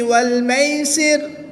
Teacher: را ساکن سے پہلے حرف کے نیچے زیر ہے تو اس را کو باریک پڑھیں گے، پر نہیں کریں گے بلکہ باریک پڑھیں گے۔